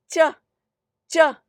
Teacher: You block it at the palate, you get cha, cha.